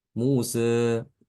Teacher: Mengucapkan fathah tapi agak cenderung sedikit ke arah kasroh gitu ya. Tidak fathah secara sempurna tidak, tapi cenderung sedikit ya ke arah sedikit aja. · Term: taklil